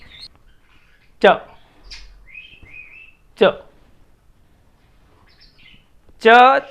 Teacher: जिह्वा तालु को छूती है, बिल्कुल सीधी, मुड़कर नहीं, बिल्कुल स्पष्ट रूप से ये तालु है और यूं छूना है उसको, और दांत बंद हो जाते हैं और एकदम विस्फोट के साथ शब्द बाहर आते हैं, जैसे च, च, च, छ, ज और झ चार वर्ण हैं। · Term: पैलेटल साउंड